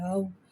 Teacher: واو کو ہونٹوں کی گلائی کے ساتھ ادا کر کے پڑھیں گے